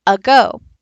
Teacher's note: you might hear a word like a go now the stressed part of that word is go the unstressed part is